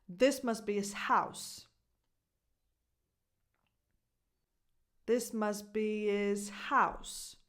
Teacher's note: No H in his and a strong H in house.